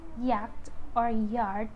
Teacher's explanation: Y is voiced alveopalatal semi-vowel. This one is also a proximant sound.